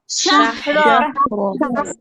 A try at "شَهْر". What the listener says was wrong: আচ্ছা পুরোপুরি র স্পষ্ট র হবে না, জাস্ট মোটা হবে, শাহর, শাহর। পুরা স্পষ্ট র জবর র এর মধ্যে হবে না, জাস্ট রটা মোটা হবে, একটু উপরের দিকে ঠেলা মারবে, রটা মোটা হবে।